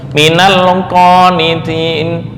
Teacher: Qof di sini enggak terlalu penuh ya.